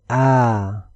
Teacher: this Aleph mud comes from the empty space of the mouth and throat if I say ah the sound begins from the vocal chords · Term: Alif mud